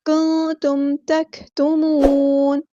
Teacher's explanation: کنتم، نون ساکن کے بعد کو ہم یہاں چھپا دیں گے، اخفا ہوگا. میم ساکن پہ یہاں پہ اظہار شفوی ہوگا، ٹائم نہیں دیں گے. کنتم تکتمون، کاف ساکن کی جو آواز ہے اس کو آپ نے ہلانا نہیں ہے، تکتمون نہیں پڑھنا، اس میں ہمس کے ساتھ ہوگا، یہ تک اس طرح.